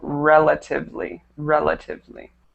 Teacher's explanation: the stress on that one relatively should be on the first e